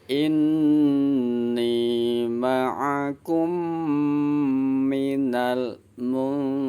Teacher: Inni ma'akum minal ada nun sukun bertemu dengan huruf ta. Nun sukunnya dibaca samar-samar ghunah. Kalau samar berarti nggak jelas. Samar ya, jangan dijelaskan nun sukunnya.